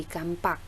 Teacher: Kata kapak di sini mengalami proses epentesis, yaitu proses penambahan bunyi pada tengah kata, yaitu saya tambahkan huruf M pada kata kapak sehingga berubah bunyi menjadi kampak.